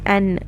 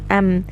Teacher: When you say the noon with izhar, with a sukoon, like noon is said an, meme is said am. So you still have a gunna, but it's incomplete. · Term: gunna naqisa